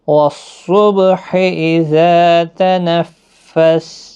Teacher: والصبح صاد حروف مستعلیہ کا حرف ہے، با ساکن پر قلقلہ ہوگا. اذا تنفس کے اوپر تشدید ہے، تشدید والا حرف سختی کے ساتھ تھوڑا ادا کریں.